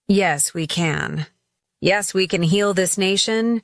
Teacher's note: Notice how Obama's voice rises with each repetition, creating emotional momentum.